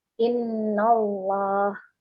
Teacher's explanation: Kurang bersih ya. Tebal tapi bersih, tidak sampai muncul waw.